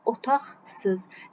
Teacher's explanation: samitlə başlayan şəkilçi və yaxud da söz gəldikdə q çevrilir x-ya, kar qaşığına. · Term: kar qarşılığına